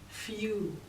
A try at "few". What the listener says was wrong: And I want the more few. I want the oo to be smaller. Few.